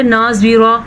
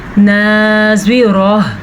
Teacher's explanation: جب اس طرح کا وقف آ جائے اور گول تا آ جائے تو وہ ہا بن جاتی ہے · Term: ہا کی آواز